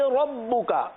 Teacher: را کو پر پڑھیں گے، با پر تشدید ہے تھوڑا سا جماؤ کے ساتھ